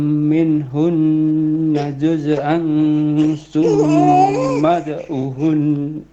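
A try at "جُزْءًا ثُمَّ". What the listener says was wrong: Coba baca juz'an summa. Jangan mantul zainya.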